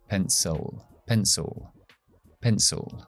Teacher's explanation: la I que hay al final de la palabra no es I, sino es sonido schwa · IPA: /ə/